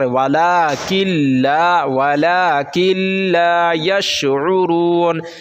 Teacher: یرملون 6 ہیں، یا، را، میم، لام، واو، نون، ٹھیک ہے۔ تو لام اور را یہ دو حروف ایسے ہیں جس میں جب ہم ملاتے ہیں تو صرف ادغام کرتے ہیں، یعنی صرف ملاتے ہیں